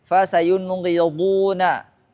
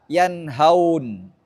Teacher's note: Dinamakan idhar karena jelasnya pengucapan nun atau tanwin ketika bertemu salah satu huruf yang keluar daripada tenggorokan